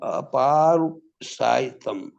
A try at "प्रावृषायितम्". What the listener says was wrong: पार नहीं, देखो पा के पैर में र, तो प्रा, देखो जैसे पंजाबी में भाई को क्या बोलते हैं, प्रा बोलते हैं ना, प्रा, तो आप इसमें प्रा बोलो।